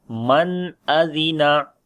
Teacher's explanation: After the noon sakin, the next letter is hamza. So we make izhar, the clear sound of noon.